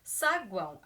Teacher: Normalmente, o O seria uma vogal, mas aqui, como o som dele caiu para o U, ele se torna uma semivogal.